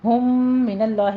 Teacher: ہم من اللہ میں 2 میم اکٹھے ہو رہے ہیں، ادغام شفی کریں گے، 2 کاؤنٹ کرنا ہے